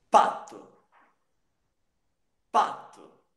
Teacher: São consoantes, esses exemplos são consoantes bilabiais.